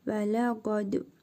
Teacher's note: Vav hərfidir və ləm hərfi lə, qa, dəl hərfinin üzərində cəzm var. Qalqalə edərək vurğulu tələffüz edirik.